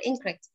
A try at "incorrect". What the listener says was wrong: you can never say an, you should say in, incorrect.